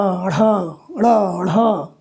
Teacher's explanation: अभी आप जान लीजिए, इनको उच्छिप्त व्यंजन कहते हैं। उच्छिप्त, क्योंकि इनको जब आप बोलेंगे तो बड़ी तेजी से जीभ को तालु से हटाना पड़ता है।